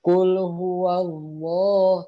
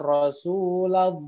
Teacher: Contoh, Qul huwallah, tuh qul huwa, wa-nya kan berharokat fathah, bukan qul huwi atau qul huwu, tapi qul huwa. Ketemu lafaz Allah maka lamnya menjadi tebal.